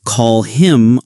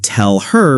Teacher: The H sound can also disappear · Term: disappearing sounds